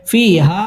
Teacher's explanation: মুনফাসিল তিন আলিফ টেনে পড়তে হবে